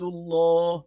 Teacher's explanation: اللہ کا نام موٹا پڑا جائے گا